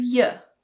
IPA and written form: jə (you)